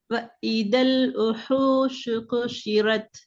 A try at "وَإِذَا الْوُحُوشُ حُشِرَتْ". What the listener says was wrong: குஷிரத்தல்ல ஹார்ட sound வரணும். அலிஃப்ல மட்டும் கவனம் செலுத்த வேணாம். படிச்சு கொண்டு எழுத்தையும் பார்த்துக்கணும். உங்களோட கவனம் அலிஃபுக்கு